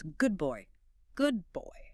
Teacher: The brain anticipates the lips closing for the B in boy, so the D in good mutates into a B.